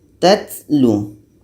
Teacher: Ada angin yang keluar. Angin yang keluar itu namanya hamas.